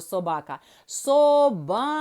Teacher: А як правильно собака наголошений другий склад назвемо його ба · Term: наголошений склад